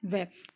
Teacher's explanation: ठीक है भाई, और दंतोष्ठ में आता है व, दंत ओष्ठ। ठीक है, व ये दांत से भी बोले जाते हैं और होठ से भी बोले जाते हैं